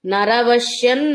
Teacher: అనుస్వరం నకారం నరవశ్యన్ అన్నట్టుగా ఎన్ వినిపిస్తుంది